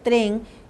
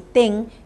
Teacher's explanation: Si un niño en vez de decir tren, él dice ten, diríamos que el problema está en el segundo segmento del onset.